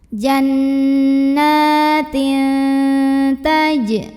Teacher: Maka tanwin kasroh yang asalnya bunyinya n, maka ketika bertemu dengan ta bunyinya jadi samar-samar, tidak jelas n. Siap-siap ke huruf ta disertai dengungan. Jannatin. Tapi dengungnya sedikit aja ya, karena huruf ta ini makhrajnya masih dekat dengan nun. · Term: ikhfa aqrab